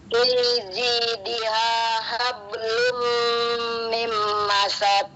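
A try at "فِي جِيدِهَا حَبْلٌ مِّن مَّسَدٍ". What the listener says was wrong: Hablumnya doang yang ditahan, mimnya ditahan juga karena nun mati ketemu mim itu. Dan dia juga ada tasdidnya.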